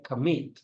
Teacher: We have here commit, so the stress is in the second vowel.